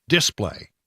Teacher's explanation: Texans always want to for some reason put the emphasis on the first syllable on a lot of words like display